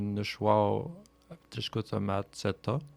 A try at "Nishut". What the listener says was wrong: Nishut. On dit pas Nishwa. Nishut. Nishut Katchkotomatseto.